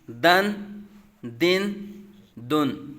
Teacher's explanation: ضاد حروف مستعلیہ میں سے ہے، اس کو پر پڑھیں گے۔